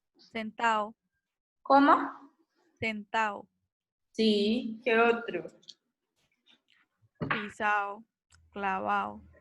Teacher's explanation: hay una pérdida de la d en posición intervocálica